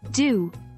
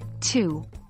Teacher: Again, the D is voiced and T is voiceless.